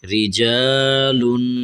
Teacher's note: آگے تھوڑا سا آخر میں غنہ کرنا ہے، آواز کو ناک میں سے نکالنا ہے، رجالن۔ یہ را کو ہم نے باریک کرنا ہے، ٹھیک ہے۔